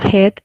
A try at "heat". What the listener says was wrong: H-I-T, hit. And when there are two vowels together, it becomes a bit longer sound. Hit, heat.